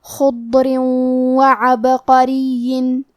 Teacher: آخری میں را کے نیچے تنوین زیر ہے، پھر حرف الواو ہے کلمت وعبقرین، واو حروف الادغام بغنہ میں سے ہے تو ہم یہ حکم کو غنہ اور تشدید کے ساتھ ادا کریں گے